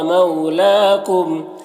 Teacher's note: لام میں کھڑا زبر ہے، اسے ایک الف کے برابر کھینچیں گے